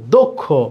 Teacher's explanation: ক্ষীয় থাকলে এই দয়ের সাথে যে আছে, এই অয়ের উচ্চারণটা অয়ের মতো না হয়ে ও এর মতো হবে। এই জন্য এখানে দিতে হবে ওকার, দক্ষ।